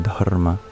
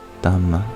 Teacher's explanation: They don't usually have R sounds in Pali, so instead of Dharma, it becomes Dhamma.